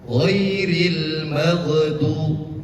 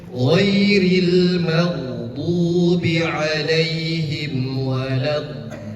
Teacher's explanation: Jangan seperti itu, karena huruf ghain itu tidak memiliki sifat qalqalah. Qalqalah artinya adalah bergerak atau memantul. Maka huruf gha tidak memantul.